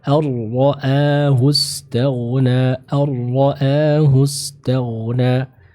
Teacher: Namun karena dia dihukumi sebagai idgham bi ghairi gunnah, maka ro-nya atau maka nunnya hilang dan langsung dimasukkan ke huruf ro. Ar-ra'ahu istaghna, ar-ra'ahu istaghna.